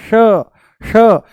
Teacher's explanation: जैसे ही हम बोलते हैं श जैसे ही बोलते हैं हम श मूर्धा ऊपर से बोला जाता है श। जीभ को थोड़ा सा ऊपर घुमा के तालू से लगा के बोला जाता है।